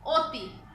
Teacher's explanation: কেমন, যদি আমরা বলি অতি, অতি বানানটা দেখো, খেয়াল করো, বানানটা কিন্তু অ তয় রস্যি, কিন্তু আমরা উচ্চারণ করার সময় কি বলছি, অতি, ও হয়ে যাচ্ছে, অটা ও এর মতো উচ্চারিত হচ্ছে, এই কারণে এর উচ্চারণটাকে বলা হয় কি সংবৃত উচ্চারণ